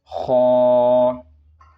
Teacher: خا کو موٹا پڑھنا ہے